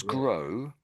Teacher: There's no real W sound when you say GROW.